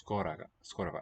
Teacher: These unaccented O vowels will become A.